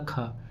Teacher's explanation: ख अघोष और महाप्राण है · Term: अघोष महाप्राण